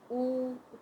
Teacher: उ तो होठ जो है वो राउंड शेप में बन रहे हैं · होठ जो है वो राउंड शेप में बन रहे हैं। तो ये हो गए ओष्ठ, वाणी का जो नाम देंगे ओष्ठ है।